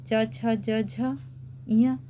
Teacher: तालु से जिभ्या टकराती है। मतलब अपनी जीभ के दोनों किनारे ऊपर वाले हिस्से से टकराती हैं। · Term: तालव्य